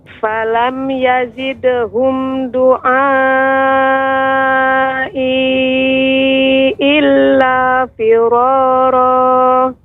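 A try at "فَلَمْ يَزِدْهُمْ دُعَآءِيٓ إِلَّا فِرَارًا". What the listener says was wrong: Ya, kemudian huruf dal tidak dengan ujung tepi ujung lidah. Ya. Namun dengan punggung, ya, punggung ujung lidah. Ujung namun bagian atasnya. Doa. Kalau dengan ujung tepi ujungnya, tepi ya bagian benar-benar ujungnya doa. Nah, ini kurang tepat. Yang benar doa.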